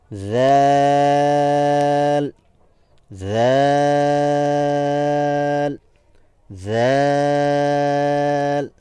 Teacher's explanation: জিহবার অগ্রভাগ সামনের উপরে যে দাঁত আছে সেই দাঁতের সাথে স্পর্শ হবে এবং সামনের অংশ সামান্য পরিমাণ বের হয়ে আসতে হবে এবং বাহির থেকে যেন দেখা যায় আমরা এভাবে করে উচ্চারণ করব